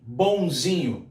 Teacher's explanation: O M de mamãe vira N de neném, mas aquele ON continua sendo ditongo decrescente nasal.